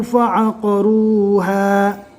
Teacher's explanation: قف کو پور پڑھیں گے اور رو کو بھی پور پڑھیں گے